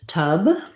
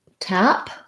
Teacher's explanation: So for tub, you're going to hold that schwa longer because there's a voice sound at the end. Tap, you can say the vowel sound fairly short and the voiceless sound.